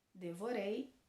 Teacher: a palavra devorei aonde a última sílaba é mais forte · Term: oxítona